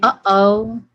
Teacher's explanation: this is a voiceless or glottis stop.